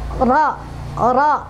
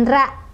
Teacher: Karena ro yang berbaris fathah itu ya harus tebal ya. Jadi ro ya, bukan ra, ro ya. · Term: tafkhim